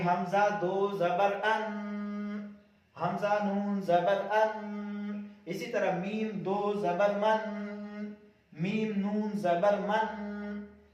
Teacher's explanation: تیسری بات بھی کلیئر ہو گئی کہ یہ اصل میں جو دو زبر تنوین ہوتا ہے یہ نون ساکن ہے اور نون ساکن کے اندر جیسے آواز گنگناتی ہوئی نکلتی ہے تو اسی طرح دو زبر تنوین کے اندر بھی اسی طرح آواز گنگناتی ہوئی نکلتی ہے